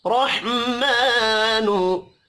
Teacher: हा साकिन पर कलकला नहीं करना।